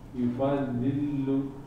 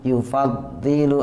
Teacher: Lamnya yang terakhir nggak boleh tasdid ya.